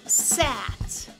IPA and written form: sæt (sat)